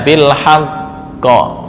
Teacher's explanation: karena sebelumnya berupa fathah, maka pantulannya condong ke arah fathah